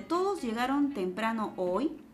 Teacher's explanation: estamos notando la necesidad de subir el tono final para responder sí o no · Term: tono ascendente